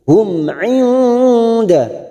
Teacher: nun sukun bertemu dal ikhfa hakiki, kita samarkan bunyi nun sukun 3 harokat